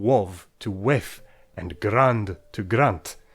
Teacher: Take the voice out of final consonants, shifting wov to wef and grand to grant.